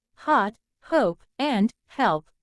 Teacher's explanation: a glottal sound where the vocal chords create a partial blockage of air flow resulting in a hissing sound at the beginning of the word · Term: glottal H sound